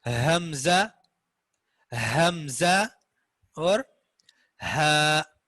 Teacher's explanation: یہ 2 حروف اقصائے حلق سے, حلق کے نچلے حصے سے جو سینے کے قریب ہے